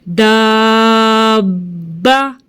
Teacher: دال زبر الف با دا، با زبر با دا با، ٹھیک ہے۔ دبا کے ملایا ہم نے، ہونٹوں کو ایسے مضبوطی سے بند کیا پھر کھولا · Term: تشدید